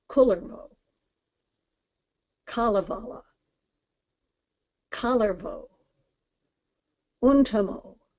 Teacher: In Finnish, the major emphasis is always on the first syllable of the word. So it's always Kullervo, Kalevala, Kullervo, Untamo.